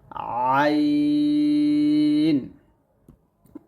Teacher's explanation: আইনটা গলার মাঝখান থেকে চাপ দিয়ে বলবেন